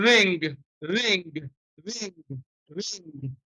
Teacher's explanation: velar nasal, in which you use the back of your tongue against the soft palate